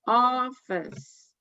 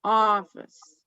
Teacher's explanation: the first part of that word is louder and gets more emphasis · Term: stressed